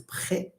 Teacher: It's a real r. But when you say prêt in French, it's a r sound. It's voiceless.